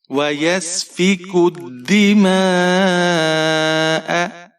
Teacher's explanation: کاف کے اوپر پیش ہے, آگے دال مشدد ہے, کاف کو دال کے ساتھ ملائیں گے.